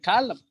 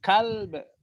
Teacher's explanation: huruf lam sukun jangan sampai terbaca le, dan tentunya sifat qalqalah ba sukun harus diperhatikan. Untuk itu huruf ketiga dari belakang yang berharokat hendaknya agak sedikit dihentakkan suaranya.